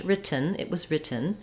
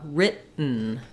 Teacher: So in American English, we don't say written. We don't have a puff of air, not an aspirated T there, and there's no vowel before the N sound. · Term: syllabic N